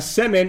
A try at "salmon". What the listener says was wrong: Salmon. It sounded like you were saying semen. Like pronouncing semen.